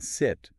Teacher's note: lax vowels like the i in sit are more relaxed